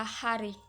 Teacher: Terakhir yaitu glotal, yaitu bunyi yang muncul dari hambatan di pita suara